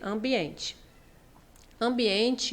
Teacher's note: esse M, a função dele é nasalizar o A, e esse N, a função dele é nasalizar o E